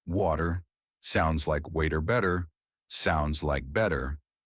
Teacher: Sometimes the T doesn't sound like a T at all. It sounds like a soft D. This is called the flap T, and it's one of the most native sounding features you can learn.